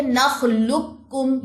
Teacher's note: और यहां पे भी देखिए नखलुकुम ये लाम की पेश बारीक काफ के साथ जाके मिल रही है। यहां पे भी मोटा काफ सुनाई नहीं दे रहा